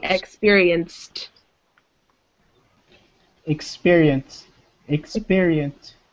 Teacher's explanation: There's no id sound at the end. It sounds like a T.